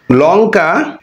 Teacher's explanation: লঙ্কা শব্দের এই ল উচ্চারণ করতে গিয়ে সেটা দন্ত মূল থেকে উচ্চারিত হচ্ছে। তাহলে ল এর এখানে উচ্চারণ দন্তমূল থেকে। · লঙ্কা উল্টো আলতা, খেয়াল করলে দেখতে পাই যে লঙ্কা শব্দে ল রয়েছে, উল্টো শব্দেও ল রয়েছে, আলতা শব্দেও ল রয়েছে, কিন্তু লঙ্কা শব্দের এই ল উচ্চারণ করতে গিয়ে সেটা দন্তমূল থেকে উচ্চারিত হচ্ছে